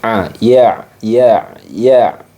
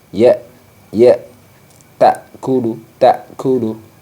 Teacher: Ain itu memiliki sifat yang namanya tawassut tawasud jadi suaranya itu antara mengalir dan tertahan sedikit mengalir dan sedikit tertahan